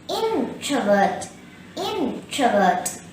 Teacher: here the stress is on the first syllable in.